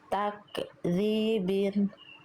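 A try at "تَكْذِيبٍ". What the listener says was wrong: Nah, itu masih ada tak. Nggak ya, tapi takdzibin. Nah, cukup dipercikan aja nafasnya takdzibin.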